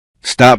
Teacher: when someone says stop very carefully, you may hear a small release after the P. But inside a sentence such as stop talking, the speaker may hold the P very briefly and move directly into the T of talking. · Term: release consonant